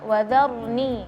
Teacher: Juga perlu diperhatikan juga tebal tipisnya harful ra, ya, wadharni. Ra-nya tadi ra mati sebelumnya fathah harus dibaca dengan tebal